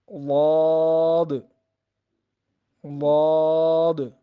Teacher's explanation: یہ زبان کی جو کروٹ ہے اور اوپر کی داڑوں کی جو جڑ ہے وہاں سے ادا ہوگا۔